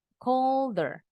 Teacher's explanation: He called her, haknya dibuang lagi. Jadi nyambungin bunyi deh-dehnya ke er.